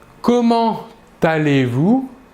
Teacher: pour cette expression comment allez-vous nous réaliserons la liaison entre comment et allez